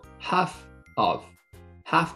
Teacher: これは▁half▁の▁F▁と▁of▁の▁O▁がくっついて、half▁of。